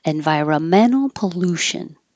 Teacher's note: Man is your primary stress, and lu is your secondary stress, so it gets longer.